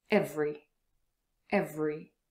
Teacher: here we move from v to r without a schwa